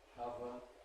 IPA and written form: ˈkʌvə (cover)